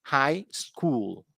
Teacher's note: high school is a noun so stress on the first part